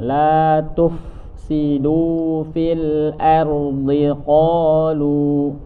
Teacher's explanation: huruf fa mempunyai sifat ada nafasnya kemudian ada suaranya, jadi nafas dan suaranya berjalan.